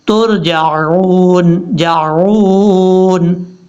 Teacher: جیم کے بعد جو عین ہے، عین کو حمزہ کی آواز میں نہیں پڑھنا، ترجعون نہیں پڑھنا، یہ غلط ہو جائے گا، ترجعون جعون، اس طریقے سے۔